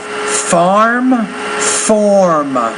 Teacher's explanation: you're not really pronouncing that r in the middle in either case